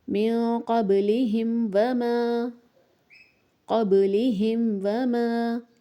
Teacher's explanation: یہاں پر ہم نے میم کو ظاہر کر کے پڑھنا ہے، میم کو بھی ظاہر کرنا ہے اور واو کو بھی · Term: اظہار شفوی